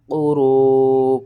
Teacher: قاف پیش کو، را واو مد پیش رو، قرو، 5 الف کے برابر آپ نے اسے کھینچنا ہے